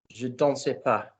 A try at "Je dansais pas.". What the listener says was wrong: Stop spitting your consonants out at me. Be French. Je dansais pas.